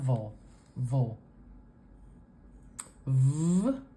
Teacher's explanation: we make with our teeth on our lower lip and it's voiced we have vibration going on for the V sound